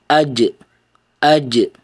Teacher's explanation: Dan itu dikarenakan ada ee udara yang tertahan sebelum dilepaskan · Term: qalqalah